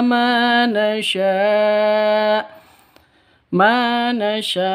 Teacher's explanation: panjang dua ketukan sama karena ada Alif diawali dengan fathah